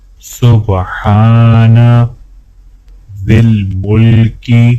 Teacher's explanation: ہا کو الف کے ساتھ ملاتے ہوئے ایک الف کے برابر کھینچیں گے